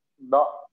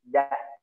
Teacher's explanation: Dha itu di tepi lidah, ya. Kalau da di ujung.